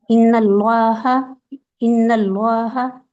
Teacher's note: नून को मोटा नहीं करना सिर्फ अल्लाह के नाम को लाम को मोटा करना